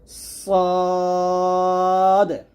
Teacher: সদ যখন উচ্চারণ করবেন মুখটা ভরে যাবে মুখটা ভরে উচ্চারণ করতে হবে